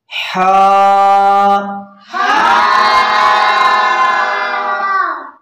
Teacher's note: وسط حلق یعنی حلق کے درمیان والے حصے سے حا ادا ہوگی